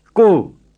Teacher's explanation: say the o in co with a good round burmese o and not in english o